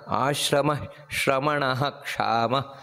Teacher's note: ಆಶ್ರಮ ಆ ರೀತಿ ಹೇಳಿ ಶ್ರಮಣಹ ಅಂತ ಅಲ್ಲಿ ಪೂರ್ತಿ ಎರಡು ಸೊನ್ನೆ ಏನಿದೆ ವಿಸರ್ಗ ಅದನ್ನ ಪೂರ್ತಿ ಹೇಳಬೇಕು ಯಾಕಂದ್ರೆ ಅದರ ಪಕ್ಕದಲ್ಲಿ ಕ್ಷಕಾರ ಇರುವುದರಿಂದಾಗಿ